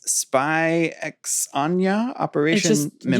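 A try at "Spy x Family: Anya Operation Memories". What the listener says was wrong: You don't pronounce the X. People who know Spy Family will understand that, yes, there's an X in there.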